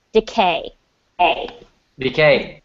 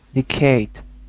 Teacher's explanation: There's no t sound on the end. Just decay.